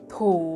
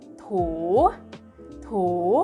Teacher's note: totung itu adalah konsonan tinggi, ditambahkan suku kata hidup, dalam hal ini adalah vokal panjang u. Jadi dibacanya bangkit.